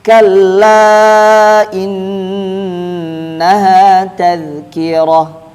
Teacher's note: Kaf itu dia ada desisnya